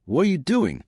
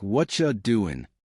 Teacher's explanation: Native speakers connect words. For example, what are you doing? Sounds like what ya doing. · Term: connected speech